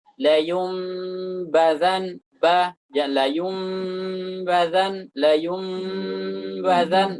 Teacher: Kita keluarkan gunnah dari gunnah mim dari hidung, kemudian nantiqu bil ba, kemudian kita ucapkan ba majhuratan syadidah, dengan sifat jaharnya dan sifat syiddahnya, keras. Bitaqwiyati kazzi syafataini wadh-dhaghti 'alaihima qalilan.